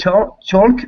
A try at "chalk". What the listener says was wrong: It's just chalk. So the L is silent. Chalk.